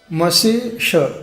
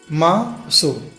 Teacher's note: म को ज्यादा समय देना है तो अपने आप क्या होगा सु पर ह्रस्व छोटी मात्रा होगी